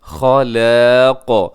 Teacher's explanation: خا موٹا ہے، اس کے بعد لام اور الف جو ہیں وہ دونوں باریک ہوں گے